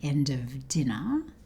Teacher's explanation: She doesn't say the letter R at the end of 'dinner'.